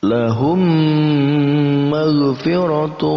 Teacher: Idgham itu artinya menggabungkan, mimi itu antara dua mim, digabungkan antara kedua mim ini. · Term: idgham mimi